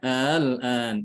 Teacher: Dimudahkan pengucapannya. Dia tidak dibaca hamzah, tapi dibaca antara hamzah dengan alif. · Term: tashil